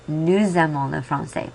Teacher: So if you look at this example sentence, nous aimons le français, typically we pronounce that word nous, but because aimons starts with a vowel, we pronounce that S like a Z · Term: liaison